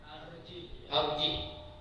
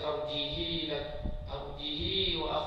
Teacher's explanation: ha dhamir dibaca dengan sukun walaupun ia berada di antara dua huruf yang berbaris